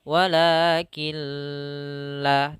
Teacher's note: tidak disertai dengan gunnah, tidak ditahan